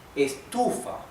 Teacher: Estufa, because the accent, the stress is in the second syllable